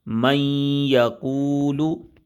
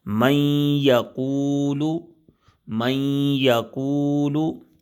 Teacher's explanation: نون ساکن کے بعد یا آ گیا اور یا مشدد ہے تو اب یہاں پر کیا ہوگا؟ ادغام ہوگا لیکن غنہ بھی ہوگا